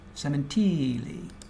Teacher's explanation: It's pronounced with a smooth flowing emphasis on the second to last syllable.